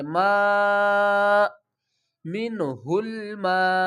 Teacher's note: وقف کی صورت میں حمزہ کو ساکن پڑھیں گے